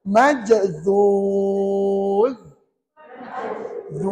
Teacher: hujung lidah kita keluar sedikit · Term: makhraj huruf z